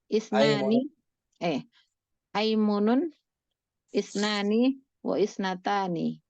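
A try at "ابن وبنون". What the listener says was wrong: Bukan nggak dibaca hamzahnya. Hamzah nggak dibaca ya. Ibnun wa benumun gitu. Hamzah wasal ya. 12 isim, hamzahnya hamzah wasal. Ismun, istun, isnan, isnatan, imrun, imra'atun, ibnun, ibnatun, ibnamun, aimunun.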